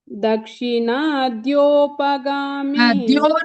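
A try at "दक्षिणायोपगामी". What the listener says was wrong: சொல்லும்போது யா வந்து அங்க யாவே இல்லையே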